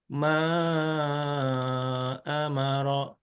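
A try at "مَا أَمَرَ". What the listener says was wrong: Nah, ini ngambil yang 5 nih. Coba yang 4. Jadi paling aman nadanya lurus sih, paling aman.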